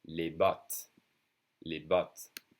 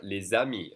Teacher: I'm connecting the S sound that's usually silent to the next vowel with a Z sound.